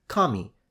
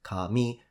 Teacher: the word for God which is Kami high low and the word for for hair which is Kami which is low high